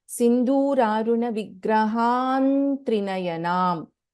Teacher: So in this case, we have Anuswara followed by Ta, and the fifth letter of the Varga is Na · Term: Varga Panchama rule